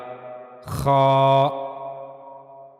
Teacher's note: गले का ऊपर वाला हिस्सा यानी जो मुंह की तरफ वाला हिस्सा है गले का वहां से ख को अदा किया जाएगा।